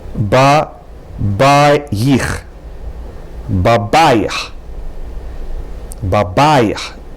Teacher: The accent is on the middle syllable.